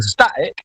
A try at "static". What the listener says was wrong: Static. How about static? Don't pronounce the T.